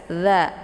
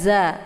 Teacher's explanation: Kemudian za dibaca pendek ya. Za posisi makharijul huruf za ini tepatnya di ujung lidah dengan ujung gigi seri bagian atas. Za. Jadi sifatnya lunak, tidak usah ditekan ya.